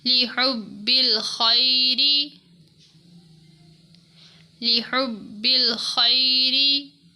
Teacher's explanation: را کو باریک پڑھا کیونکہ اس کے نیچے زیر ہے